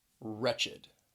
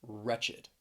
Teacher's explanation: this word has two syllables because that ed at the end is the second syllable, that id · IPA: / ˈrɛtʃ ɪd /